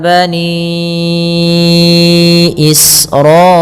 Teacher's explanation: alirkan nafas ketika melafalkan sin karena sin punya sifat hamz · Kemudian pada lafal bani Israila ni, panjangkan ya sepanjang 4 harakat.